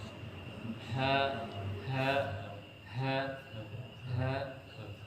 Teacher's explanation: sifat dari huruf ha yaitu almahmus ya mendorong udara ya keluar dari rogam ha ha ha ha iya kemudian sifat